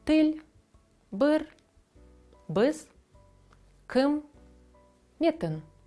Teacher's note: Літера «і» у більшості випадків дає дуже короткий звук, середній між українським «і» та «и».